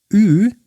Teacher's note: Ü sounds like E, but with rounded lips